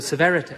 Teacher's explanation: He's gone from very posh and heightened RP to this trilled R, severity. So there's that little trill, which is really dated now.